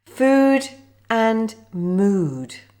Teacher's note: Food and mood with the long /u:/ sound.